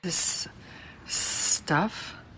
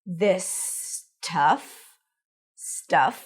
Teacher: She connects the s of this with the s of stuff.